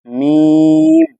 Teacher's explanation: میم ادا ہوتا ہے دونوں ہونٹوں کے جو ہے سخت حصے سے، جو باہلا دونوں ہونٹوں کا باہلا حصہ ہوتا ہے اس سے میم ادا ہوتا ہے۔